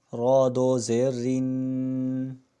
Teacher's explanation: را کے نیچے جب زیر آئے تو را کو باریک پڑھا جاتا ہے